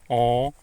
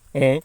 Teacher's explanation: first one is like mid open, so like on. Second one, more like mid close, on. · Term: nasal O's